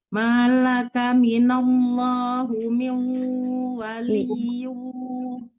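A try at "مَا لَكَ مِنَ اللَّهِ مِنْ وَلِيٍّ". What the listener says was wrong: Minallahi bukan hu ya.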